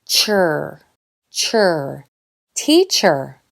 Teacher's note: This vowel sound is strong, ee, “teacher”, but the last syllable is pronounced with that quiet, common sound, the schwa